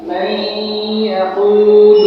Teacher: এই উদাহরণের মধ্যে আমরা দেখতে পাচ্ছি যে এখানে নুন সাকিনের পরে ইয়া আসছে, অর্থাৎ গুণনা সহ ইদগামের হরফ ইয়া। এইজন্য নুন সাকিনকে ইয়ার সাথে ইদগাম করে গুণনা সহিত করতে হবে। যেমন উচ্চারণটা হবে এমন, যেমন মাইয়াকুলু, যেখানে ইদগাম নুন সাকিনকে ইয়ার সাথে ইদগাম করে গুণনা সহিত আমরা উচ্চারণ করতেছি মাইয়াকুলু।